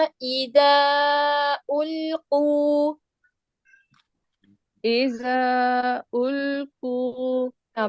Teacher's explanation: سیٹی نہیں ہوگی, ٹھیک ہے. زال نرمی کے ساتھ پڑھا جائے گا